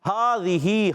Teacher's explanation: ہاذہی، ہا پر کھڑا زبر ہے، ایک الف کھینچنا ہے. ہا ادا ہوتا ہے حلق کے نیچے والے حصے سے